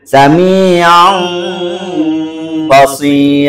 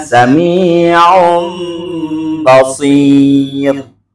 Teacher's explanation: Jadi nun mati berjumpa dengan ba ini, ba-nya menjadi mim. Pengucapan nun mati atau tanwin yang bertemu dengan huruf ba yang berubah menjadi mim, disertai dengan gunnah, disertai dengan dengung.